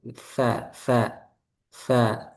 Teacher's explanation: Gampangannya digigit. Nah, jadi sampai ujungnya itu keluar dari gigi. Nah, sampai kelihatan dia dari luar gitu. · Di mana tempat keluar zo, zal, dan sa yaitu punggung ujung lidah pada posisi menempel di ujung dua gigi seri atas